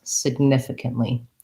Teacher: So the unstressed syllables can have a schwa or a light I. They're just very short, lax vowels, significantly.